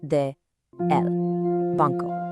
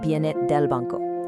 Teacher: those two vowel sounds just squish and merge together into one tiny perfect word, del. De plus el equals del.